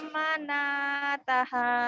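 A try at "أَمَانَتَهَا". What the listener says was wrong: salah, panjang pendeknya salah. Amanataha. Amanataha. Amanataha.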